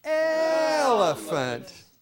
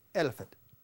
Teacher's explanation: when we say the word elant we stretch that out because that first syllable the L is actually the longest part of the word